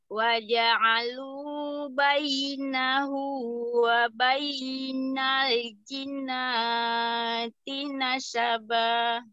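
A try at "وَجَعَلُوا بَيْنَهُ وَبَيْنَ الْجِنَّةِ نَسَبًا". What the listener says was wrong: Ya, Umi, nun tasydidnya kelewatan. Belum ditahan. Jinnati.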